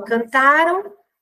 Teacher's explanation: cantaram a sílaba tônica é a penúltima ela tá então existe mudança de sílaba tônica né então cantaram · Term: paroxítona